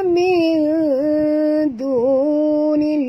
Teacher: nun mati bertemu dal, sorok dan dengung, ikhfa hakiki